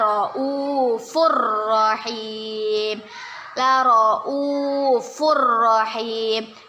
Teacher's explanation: roufur Rohim tanwin bertemu dengan huruf Pro kita baca kita masukkan kita membacanya dengan dimasukkan ke huruf ro tapi tidak berdengung